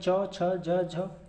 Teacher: कंठ के बाद तालु आता है तो तालु में च, छ, ज, झ